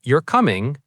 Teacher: If I say you're coming with falling intonation, it sounds like a statement. I'm telling you something.